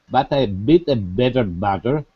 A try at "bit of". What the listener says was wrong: The word bitter, bitter, is bitter, not better, bitter.